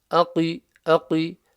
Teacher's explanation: So the qaf is from the back of the mouth, it's a full mouth letter.